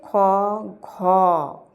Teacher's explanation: দেখো উচ্চারণ করতে বেশি সময় লাগে। অর্থাৎ শ্বাসবায়ু বেশি পরিমাণে লাগে। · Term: মহাপ্রাণ ব্যঞ্জন ধ্বনি